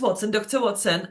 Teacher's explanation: two syllables stress on the first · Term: stress scheme